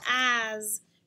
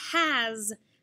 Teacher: it's a voiced s following a vowel